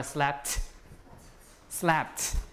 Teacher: so we add the t right because p is voiceless